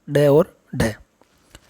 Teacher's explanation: जिनके उच्चारण में जीवा की नोक झटके से नीचे गिरती है, तो वह उत्तक्षिप्त यानी फेंका हुआ ध्वनि कहलाता है, ड और ढ।